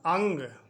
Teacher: ये ध्वनि ए के बाद में नाक से बोली जाने वाली न की ध्वनि निकलती है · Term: अनुस्वार